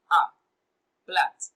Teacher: plat has the monophthong, the short vowel sound, A. Plat.